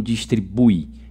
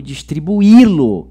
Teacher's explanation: vira hiato, onde o i é tônico, está sozinho, e ele então tem que ser acentuado.